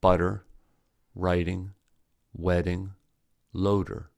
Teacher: the sound is made by the tongue briefly tapping the alveolar Ridge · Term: flap T